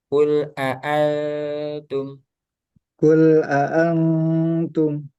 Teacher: Nunnya enggak jelas ya, jadi samar